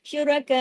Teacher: हमजा तक आके रुके तो हमजा की आवाज आपके गले में आनी चाहिए · اوپر مد ہے, اور حمزہ تک آ کے رکے تو حمزہ کی آواز آپ کے گلے میں آنی چاہیے